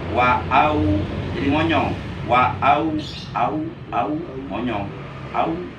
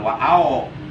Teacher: Jadi jangan cenderung ke huruf O ya. Tapi cenderung ke huruf U. Jadi wa'au, au bukan ao.